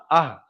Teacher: কণ্ঠনালী শুরু হতে উচ্চারিত হয় হামজা হা, এটা হলো ছোট হা, এটা হলো ছোট হা, হামজা হা।